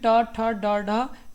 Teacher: ये ट, ठ, ड, ड ये आपके मूर्धन्य।